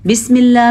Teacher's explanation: بسم اللہ میں اللہ کا نام ہم نے باریک پڑھا ہے